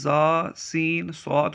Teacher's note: ادا کرتے وقت سیٹی کی طرح آواز نکلتی ہے، اس لیے ان حروف کو حروف صفیریہ یعنی سیٹی والے حروف کہتے ہیں۔